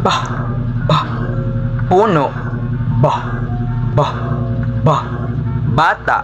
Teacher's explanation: nagkakaroon ng saglit na pagsara ng daloy ng hangin bago ito palabasin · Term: panlabi